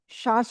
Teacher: জিহ্বার মধ্যখান উপরে তালুর সাথে লাগিয়ে শা শা শব্দ করে আমরা উচ্চারণ করব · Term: শিন